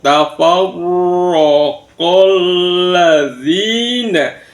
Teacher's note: Yang pertama di wama itu ada mat tobi'i, kemudian tafarro, ro-nya di tasjid, kemudian berharokat fathah, maka ro-nya dibaca tafkhim, tebal